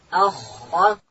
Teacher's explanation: خا ادا کیږي د ستوني په سر کښې.